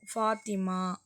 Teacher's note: ஃபாங்க sound வந்து 2 உதடும் வந்து ஒட்டாது. ஃபா அப்படின்னு சொல்லும் பொழுது ரொம்ப ஒட்டாது.